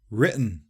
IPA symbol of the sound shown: ʔ